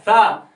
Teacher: زبان کی نوک ثنایا علیہ جو اوپر والے دانت ہیں ان کے کنارے سے ملتی ہے